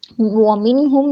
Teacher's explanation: نون ساکن کے بعد ہا حروف حلقی سے ہے، اظہار ہوگا